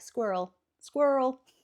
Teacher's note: the double R is just pronounced really quickly, so it kind of merges into the second half of the word